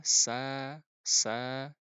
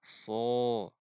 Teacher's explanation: Sin itu tipis Adapun Shad itu tebal